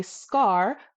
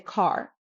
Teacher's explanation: Watch what happens when I say scar versus when I say car. Scar, no flutter. Car, did you see that? It fluttered.